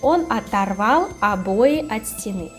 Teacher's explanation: You see many o, but we say with a.